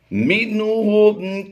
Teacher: نون ساکن کے بعد ہا حروف حلقی میں سے ہے، یہاں پر ہم نے اظہار کرتے ہوئے پڑھنا ہے